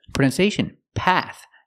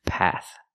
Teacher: use the short a sound like black cat plus the th sound with air no voice